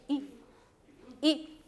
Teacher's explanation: La I latina, fíjate que la boca es más explayada, en cambio la I rusa es más pequeña. I.